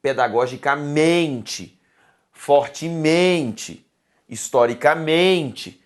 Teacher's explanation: Não existem dois acentos tônicos, só um. E esse acento tônico está na sílaba men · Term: sílaba tônica